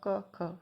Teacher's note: इन वर्णों के उच्चारण में प्राणवायु में कंपन नहीं होता, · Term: अघोष वर्ण